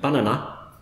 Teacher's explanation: an English listener can't tell where you've emphasised. You haven't got any schwas in there, so you're not helping them either.